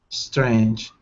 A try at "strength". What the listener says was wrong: Okay, so you got to use the TH sound there. Remember what I was telling the other lady? Tongue between your teeth, block the air. Puff of air.